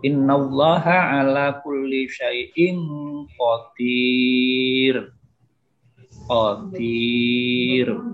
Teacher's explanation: Ya, atau yang kedua tanwin, ra yang tanwin bimusaitirin illa rin, enteng ya tipis, rin bukan win tapi rin. Ya, pengucapan ra ya, ini ringan atau tipis.